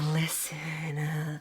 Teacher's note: she just sounds so unbelievably breathy